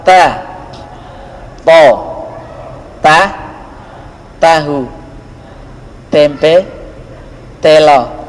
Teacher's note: Makhraj ta adalah ujung lidah bertemu dengan gigi depan bagian atas